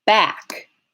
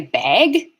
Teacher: becoming a diphthong hmm well when i go to say back because the k is voiceless on the way to the k my voicing for the vowel stops